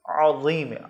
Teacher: عین حلق کے درمیان سے، اس کو الف کی طرح عظیم نہیں پڑھنا، عظیم، عین حلق سے پڑھنا ہے